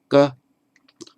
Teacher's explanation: the point of articulation, that's where the stop occurs furthest back, is the K